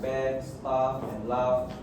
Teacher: words like bad, staff and laugh are pronounced with a long open a vowel